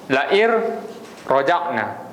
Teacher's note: Itu untuk nun mati bertemu dengan ra. Dia masuk tetapi dia tidak ada dengung.